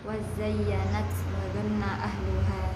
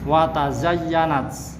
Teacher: Wazayyanat aslinya watazayyanat ya. Taknya ya diidghamkan dengan za, huruf yang berdekatan makhrajnya ya. Menjadi wazayyanat ya.